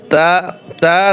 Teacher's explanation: জিহ্বার আগা সামনের উপরে দুই দাঁতের ঘোড়ার সঙ্গে লাগাইয়া